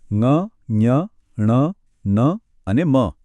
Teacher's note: હવા માત્ર મોમાંથી જ નહીં પણ નાકમાંથી પણ પસાર થાય છે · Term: અનુનાસિક વ્યંજન